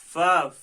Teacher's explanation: सनाया उलिया का किनारा और नीचे के होंठों की तरी वाला हिस्सा, इससे फा निकला